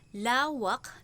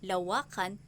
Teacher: Maaaring malipat ang diin sa isa o dalawang pantig patungong huling pantig o isang pantig sa unahan ng salita. Halimbawa, ang salitang ugat na lawak na nasa uring malumay kapag nilapian ay nagiging lawakan at nagiging mabilis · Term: Paglilipat diin